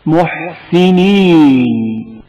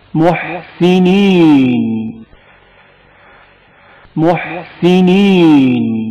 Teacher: ہا کی آواز حلق کے درمیانی حصے سے گھٹی گھٹی سنائی دیتی ہے